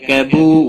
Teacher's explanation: واو مدہ ہے، ایک الف کے برابر کھینچ کر پڑھیں گے۔